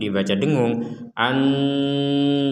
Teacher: Kalau dibaca dengung an, jadi rongga hidung kita 100% berdengung